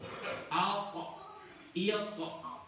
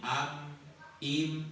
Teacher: Huruf to itu kalau dibaca memantul.